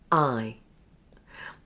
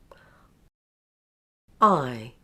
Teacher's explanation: This is known as a closing diphthong. Because for the final /ɪ/ sound, the mouth closes. Now for the first sound, I will say, /ʌ/, and join it to /ɪ/. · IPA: /aɪ/